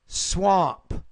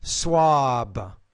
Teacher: B at the end which is a voice consonant it actually makes the vowel longer